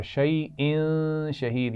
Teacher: شیئن شہید یہاں غنہ بھی ہو رہا ہے کیونکہ تنوین کے بعد حروف حلقی بھی نہیں ہیں، لام اور را بھی نہیں ہے، تو یہاں غنہ کیا جائے گا.